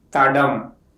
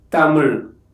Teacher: The tip of the tongue touches behind the upper teeth and the airflow is completely blocked and releases while pronouncing this sound. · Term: dental stop